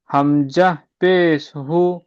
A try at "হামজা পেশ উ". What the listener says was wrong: হামজা পেশ, হামজা পেশ উ হয়, হু নয়। হামজা পেশ